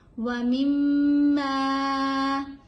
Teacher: میم کے اوپر ہم نے غنہ کرنا ہے اور میم کو تھوڑا سا لمبا پڑھنا ہے کیونکہ اس کے آگے الف ہے.